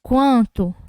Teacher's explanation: ficou saindo o som pelo nariz e pela boca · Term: ditongo crescente nasal, ditongo nasal